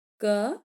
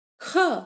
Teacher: क यहाँ हमें कम वायु की आवश्यकता पड़ रही है, अल्प प्राण, प्राण माने वायु, और ख यहाँ अधिक वायु निकालना पड़ रहा है, तो ख महाप्राण।